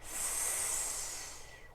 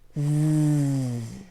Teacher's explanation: We don't use our voices for this one. The Z is almost exactly the same, but with Z, we use our voices.